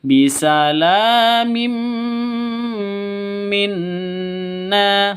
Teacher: Cara bacanya masuk ke mim disertai dengung 2 ketukan. Karena idgham bigunnah.